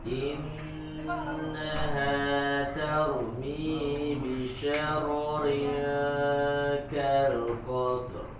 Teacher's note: Lebih dialirkan huruf ro-nya karena ro juga sama, dia punya sifat mengalir suaranya, bainiyah ya atau tawassut ya.